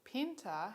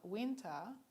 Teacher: a voiceless stop in the ancestral language has changed to a voiced approximant in the modern language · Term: lenition